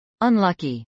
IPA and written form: ənlˈʌki (unlucky)